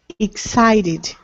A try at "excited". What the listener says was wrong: Very good. Excited. Excited.